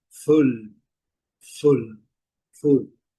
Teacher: o U, bem curto e já do fundo de garganta.